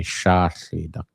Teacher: If you speak the southern dialect, you might say Sahlidak, because they don't have the SH sound